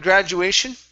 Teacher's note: you put that stress at the very beginning